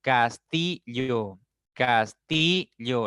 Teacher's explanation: la mayor fuerza está en la segunda sílaba por lo tanto es una palabra grave olana